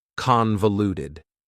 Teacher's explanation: Convoluted also has 4 syllables, and the stress is on the first syllable, convoluted.